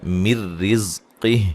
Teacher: نون ساکن کا ادغام ہو رہا ہے بلا غنہ. ٹھیک ہے، غنہ نہیں کریں گے.